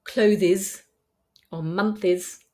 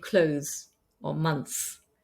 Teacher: you're better off deleting the TH and saying cloze or munts